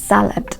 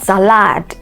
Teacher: so the stress is on the first syllable